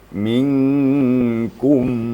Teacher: Jadi cara membacanya memang bibir kita diketupkan sedikit. Karena makhraj mim itu pada bibir bagian luar. Bibir bagian luar. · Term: idgham mimi